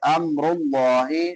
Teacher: ام میم ساکن ہے، یہاں پہ اظہار ہوگا